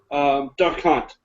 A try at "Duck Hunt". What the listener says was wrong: Did you just put the emphasis on the wrong syllable? Did you say Duck Hunt? Or did you say Duck Hunt? It sounded very different.